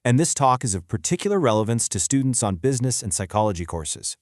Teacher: The speaker is making specific words louder, slightly higher in pitch, and a little bit longer than the words around them.